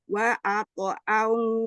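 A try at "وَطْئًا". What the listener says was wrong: Wa ta'aw wa to bukan wa ato. Wa to.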